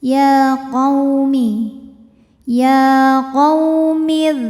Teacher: Ya qaw ada huruf lin, harful lin ya. Sebab ada waw sukun yang sebelumnya didahului harokat fathah, maka ini dibacanya cukup kita lembutkan saja.